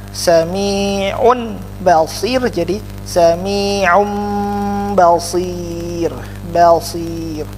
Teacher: Dengan dengung tidak, ya, karena kalau ada mim pasti ada dengung. Jadi ya ada dengung sedikit. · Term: iklab